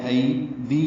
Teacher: یا مدہ ہے، 2 حرکات لمبا کریں گے یا مدہ کو